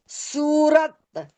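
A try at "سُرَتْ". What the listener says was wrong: सूरत नहीं है, सुरत। ये सूरत क्यों बनेगा? ये पहले ही साकिन है, तो वक्फ यही वक्फ है इसका, सुरत। हर्फ हो ना, तो वो जो पहले से साकिन हो।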